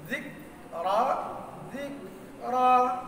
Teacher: আগে আওয়াজ বন্ধ হবে, পরে মাখরাজটা ঢিলা করে দিলে একটু শ্বাস বের হবে। দেখেন দুই রকম আওয়াজটা শুনেন, যিক রা, যিক রা, বেশ কম আছে না? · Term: হামস